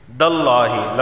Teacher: اور یہاں دیکھیں عند اللہ، نون ساکن کے بعد دال آیا ہے، دال حروف اخفا میں سے ہے، اخفا والا غنہ ہوگا۔ داللہ، لفظ اللہ سے پہلے زبر آیا ہے تو لفظ اللہ کو موٹا پڑھا جائے گا